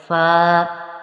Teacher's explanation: آگے ہے فا، فا چونکہ یہ حروف ہونٹوں سے ادا ہوتا ہے تو اوپر کے دانتوں کے کنارے اور نچلے کے ہونٹ کا جو تر حصہ ہوتا ہے اس سے ادا ہوتا ہے